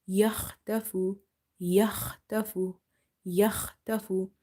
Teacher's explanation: Kha is from your halkiya letters, the throat letters, and it's from the top of the throat.